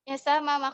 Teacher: selanjutnya Ustadzah yang kedua itu dia dua huruf hijaiyah sma-ma kerasnya tempat keluarnya sama yaitu dengan cara kedua bibirnya dirapatkan